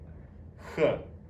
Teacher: In English, it is often transliterated as KH, but makes a guttural H sound, like H. H. Coming from the back of your throat.